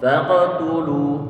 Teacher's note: Ada huruf Qaf di sini. Berarti huruf Qaf dia termasuk huruf yang punya sifat isti'la. Pangkal lidah dia terangkat ke atas sehingga nanti perlu untuk dibaca tebal.